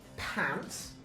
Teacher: right at the start of words such as in the word pants. P is aspirated.